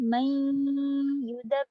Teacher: हम पढ़ते हैं नून का गुन्ना बाकी रखते हैं मिलाते वक्त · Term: इनकम्प्लीट मर्जिंग